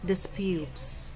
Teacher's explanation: This is another verb, so stress on the second syllable, disputes